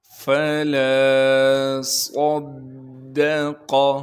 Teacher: لام کے بعد الف مدہ ہونے کی وجہ سے لام کو ایک الف کے مقدار کھینچیں گے۔ فلا صدق، صاد کو موٹا کر کے بھی پڑھنا ہے، صاد میں سیٹی بھی ادا کرنی ہے · فا کو صاف کر کے نکالنا ہے۔ سامنے کے اوپر کے دو دانتوں کو نیچے کے ہونٹ پر لگائیں گے اور پیچھے سے ہلکی سی ہوا کو زور دیں گے تو فا ادا ہوگا